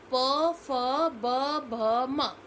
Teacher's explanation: उच्चारण स्थान कौन सा है ओय यानी कि होठों का उच्चारण जब हम इनका उच्चारण करते हैं प वर्ग का तो हमारे होठ जो है आपस में स्पर्श करते हैं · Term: ओष्ठ्य वर्ग